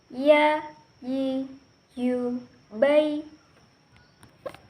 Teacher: Dan yang terakhir adalah huruf ya. Huruf ya keluar dari tengah lisan dan disentuhkan dengan langit-langit.